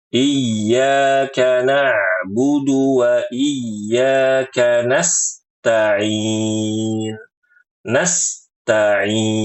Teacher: Tidak menyempurnakan sifat rikhawah. Rikhawah itu mengalir pada huruf sin yang sukun sehingga mengakibatkan suara sin terputus.